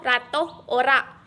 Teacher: huruf R merupakan kontoid tril, apiko-alveolar dan bersuara